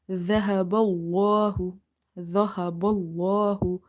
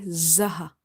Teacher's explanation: dhal from the tip of your tongue. Again, stopping the airflow.